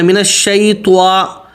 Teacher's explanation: طا کو سیدھا بولنا ہے موٹا کر کے، اس کو طوا نہیں بولنا